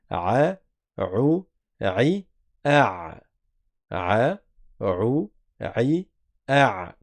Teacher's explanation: on a la lettre Aïn qui sort également de la gorge, au milieu de la gorge, à côté de la lettre ha.